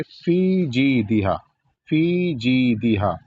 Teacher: یہاں پر جیم کے بعد یا ہے تو 1 الف کے برابر کھینچا جائے گا ، اور فی کو بھی وہاں پر 1 الف کے برابر